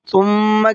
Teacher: ثم کے میم میں غنہ کریں گے اس لیے کہ میم کے اوپر تشدید ہے